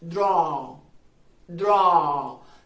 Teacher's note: es una vocal en la que comienzas diciendo una A y terminas diciendo algo como una O